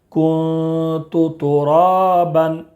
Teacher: نون ساکن کے بعد حروف اخفا کے 15 حروف میں سے تا ہے، اس لیے نون ساکن کی آواز کو ناک میں چھپا کر پڑھیں گے۔